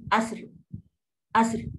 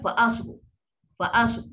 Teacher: Bunyi r tu sikit. Tapi buat nipis. Nipis senyum.